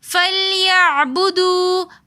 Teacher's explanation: فَلْيَعْبُدُوا میں واو مدہ ہونے کی وجہ سے ہم نے اس کو ایک الف کی مقدار کھینچ کر پڑھا